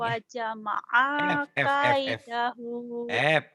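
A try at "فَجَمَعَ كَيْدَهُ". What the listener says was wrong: F. Bukan wa tapi fa. Fajama'a kaidah.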